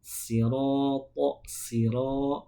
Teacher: Sin itu tipis karena pangkal lidahnya tidak terangkat. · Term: huruf sin